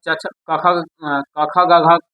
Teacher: यानी सेम उसी हिसाब से कंठ सबसे जो गले वाली भाग पहले कंठ से क से लेकर घ तक है। ये इसका जो आवाज है साउंड गला से निकलता है। कंठ से।